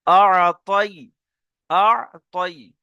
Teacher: ইয়ালিনকে নরম আওয়াজে তাড়াতাড়ি পড়তে হয়, কিন্তু এখানে টান হবে না